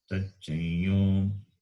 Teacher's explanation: That Tacham Anuswara will be replaced by the yakara with its nasalized form, and you get Tachayo. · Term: nasalized yakara